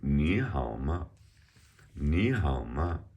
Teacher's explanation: So the ma, remember our tones, is a neutral tone here.